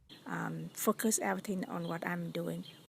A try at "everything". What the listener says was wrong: When you say everything, make sure the Y has a long E. I heard you say everything. But we need to say everything.